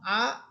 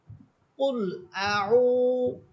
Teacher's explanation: আইন এটা কণ্ঠনালীর মধ্যখান থেকে বলবেন এবং ঠোঁট গোল করে পড়বেন।